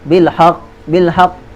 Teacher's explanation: Huruf ha nipis, huruf istifal, huruf nipis. Qaf huruf tebal, huruf isti'la.